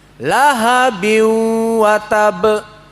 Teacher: dia akan mendengung di ujung dari hidung kita ini memanjang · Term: hunah